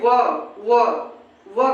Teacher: ओठ जो होता है आगे आ रहा है, और हमारे दांतों से क्या हो रहा है, टच हो रहा है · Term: दंतोष्ठ